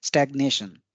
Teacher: तो आप देखिए कि स्टैग्नेट में जो पहला ए है उस पे ज्यादा बल था, स्टैग्नेट, स्टैग्नेट। जबकि स्टैग्नेशन में दूसरा जो ए है उस पे अधिक बल है, स्टैग्नेशन।